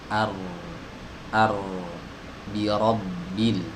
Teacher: huruf ro ini huruf yang keluar dari ujung lidah beserta punggungnya bertemu dengan gusi di atasnya